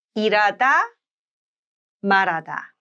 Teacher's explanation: So even if the h in this case is not a placeholder, the liaison rule, the one we discussed in the lesson number 8 of the Korean alphabet, is applied. And that's why l is pulled over and becomes r.